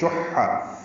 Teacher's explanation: حا وسط حلق سے ادا کریں گے. نفسہ، فا ساکن پہ ہم صحیح کھڑی زیر مد صلہ ہے، دو حرکات لمبا ہے.